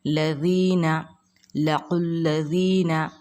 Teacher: یا ساکن سے پہلے زیر ہے تو یا مدہ ہوگی، اس کو ہم ایک الف کی مقدار کھینچ کر پڑھیں گے